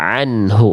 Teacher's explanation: Jadi, kalau bunyi ain itu harus di tengah-tenggorokan, lebih keluar, lebih ke atas. Kalau Hamzah di dalam.